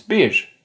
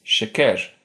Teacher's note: R's there are normally flaps, but have a fricative version at the end of syllables. For example, Turkish for number one is bir, and sugar is şeker.